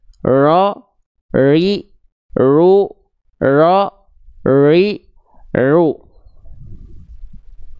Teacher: getaran huruf ro juga nggak boleh hilang